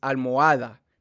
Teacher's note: It's almohada because you don't say the H. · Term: H is silent